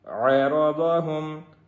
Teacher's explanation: را بھی موٹا ہوگا اور ضاد بھی موٹا ہوگا